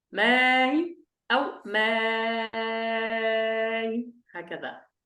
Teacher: فإذا هنا سنقرأ هكذا بأسماء أو بأسماء. إذا قرأنا بتحقيق الأولى بأ، ثم الهمزة الثانية قرأناها بالتسهيل مع حركتين أو مع 6 حركات